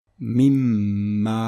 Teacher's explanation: Avec la règle de l'assimilation, le nun sakin va disparaître et le mim va prendre un shadda. Et donc ça va être prononcé mimmalin. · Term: assimilation idgham avec hunna